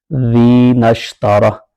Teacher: نون direct شین کے ساتھ ملے گا